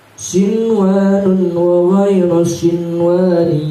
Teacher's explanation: Apabila ada nun mati bertemu dengan wawu, maka dibaca idgham bigunnah. Beda halnya pada kalimat sinwanun dan sinwanin, dia tetap dibaca idhar. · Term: idhar mutlak